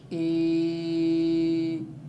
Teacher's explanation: اسی طرح یہ قاعدہ ایک ذہن میں رکھ لیں کہ جب بھی یا ساکن ہوگی اور یا ساکن سے پہلے حرف کے نیچے زیر ہوگی تو وہ یا مدہ کہلائے گی۔ یا مدہ کی مقدار 1 سیکنڈ کے برابر کھینچ کر پڑھتے ہیں